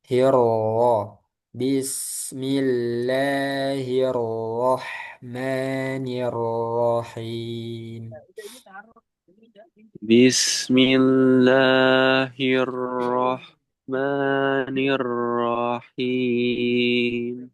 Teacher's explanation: roh yang pertama kurang tebal